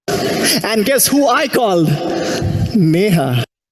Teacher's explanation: the speaker use rising intonation at the end of the questioning sentence